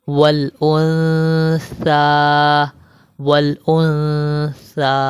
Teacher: نون ساکن کے بعد اخفا کے 15 حرفوں میں سے سا آ رہا ہے، تو یہاں پر ہم اخفا مال غنہ کر رہے ہیں